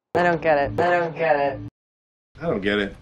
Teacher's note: stop short of the full pronunciation of the letter T in don't